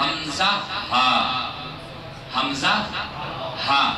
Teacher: شروع حلق سے دو حروف ادا ہوتے ہیں